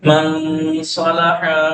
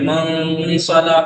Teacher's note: اخفا کا مطلب یہ ہے کہ من، دیکھیے زبان کو اس کے قریب تک لے جا رہا ہوں مخرج کے، من صلاح، من ناک سے ادا کرنا ہے کھینچ کے